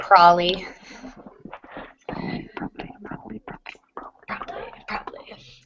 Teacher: in spoken English it won't usually receive all three syllables